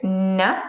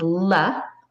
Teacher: the only difference here is how the air passes through one is through the nose the other is over the sides of the tongue